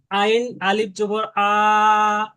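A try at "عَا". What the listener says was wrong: ভাই টান চার আলিফ তো একটু বেশি টানতে হবে। আইন আলিফ জবর আ।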